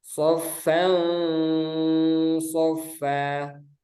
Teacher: hampir samar antara N dan Eng. Nah, cara membacanya disamarkan dengan tempo gunnah yang dipanjangkan. Jadi ini nanti setelah disamarkan suara nunnya dia ditambah dengan tempo gunnah. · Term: ikhfa hakiki